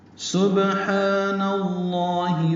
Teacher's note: سبحان میں با ساکن ہے، اس پہ قلقلہ ہے، ہا وسط حلق سے ادا کرنا ہے اور 2 حرکات لمبا کرنا ہے